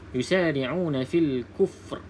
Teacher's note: Kena bunyi takrir. Ra ni ada sifat takrir lah.